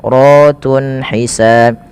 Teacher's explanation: ra-nya dibaca berharakat fathah, maka dia dibaca dengan tebal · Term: tafkhim